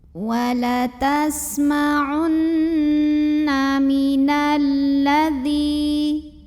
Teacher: Maka cara membacanya alif lam pertama tidak perlu dibaca ya. Jadi dari nun langsung dimasukkan atau diidghamkan ke lam berikutnya. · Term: alif lam syamsiyah